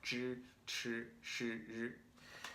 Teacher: We see SH is on this line with ZH, CH, SH, and R. These are the retroflex, where your tongue is kind of curled back, tip of your tongue is on your hard palate and the top of your mouth.